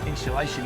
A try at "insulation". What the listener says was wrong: Insulation. It's not shh. Insulation.